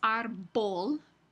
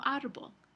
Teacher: Aquí, en la palabra árbol, la B aquí no es árbol, sino árbol. Es una B más suave y en palabras más técnicas, eso es una B fricativa que se representa con este símbolo.